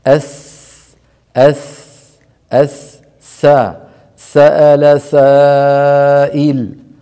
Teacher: يخرج من طرف اللسان ومن وضعه وضع طرف اللسان على اسفل الصفحه الداخليه للاسنان السفلى الاماميه الاسنان السفلى الاماميه اسمها الثنايا الثنيتين السفليين هذا هذا اللسان اضعه · والسين منفتحة مستفلة وبالتالي مرققة. هذا هو الفرق بين الصاد والسين، فنحرص على إخراج السين من مخرجها. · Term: حرف السين